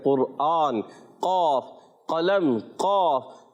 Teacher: जबान की जड़ और तालु के नरम हिस्से से काफ अदा होता है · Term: मोटा काफ